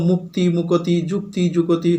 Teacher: সেই যুক্ত ব্যঞ্জনটা ক আর ত দুটো ধ্বনিতে বিভক্ত হয়েছে, তাদের মাঝখানে একটা অ চলে এসেছে। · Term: স্বরভক্তি